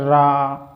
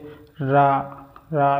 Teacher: यदि रा की बात करूं तो दोस्तों इसको प्रकम्पित बोला जाता है, प्रकम्पित, या दोस्तों लोठित वर्ण भी बोला जाता है, क्योंकि इसमें रा को बोलने में जीभ अपनी क्या करती है दोस्तों? कंपन करती है